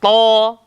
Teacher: Macam huruf ta. Hujung lidah langgar belakang gigi atas. Ta nipis, to.